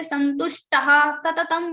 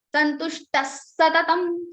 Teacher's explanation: So after Visarga, if you have sa or sha, then the Visarga sound will become same sa, whatever is there after the Visarga, like Santushtaha Satatam Visarga is followed by sa. Now in the place of ha sound of Visarga, you have to say the same sa 2 times. Santushtas Satatam, don't say Santushtaha Satatam, but because after taha you have sa, so it will become Santushtas Satatam.